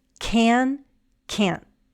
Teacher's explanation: Sometimes we have to very clearly say the short a sound so that people understand if we're saying the affirmative or the negative.